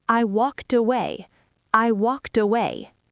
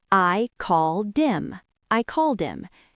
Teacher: Don't try to say walked by itself. Take the T from walked and push it on to away.